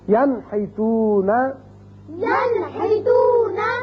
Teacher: نون ساکن کے بعد ہا آ گیا تو اس کو ہم ظاہر کر کے پڑھیں گے نون کے مخرج کو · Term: اظہار